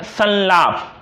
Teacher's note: र, ल, श, स व्यंजनों से पहले अनुस्वार का प्रयोग करते हुए न का उच्चारण होता है